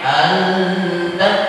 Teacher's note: ini hukumnya ikhfa, cuman ikhfanya ikhfa aqrab. Maka suaranya suara N